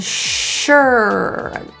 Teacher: the s-u-r is pronounced as an sh so give that little quiet sound round lips